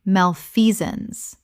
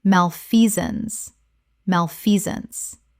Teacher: Three syllables with the stress on the second. The sance collapses to zuns.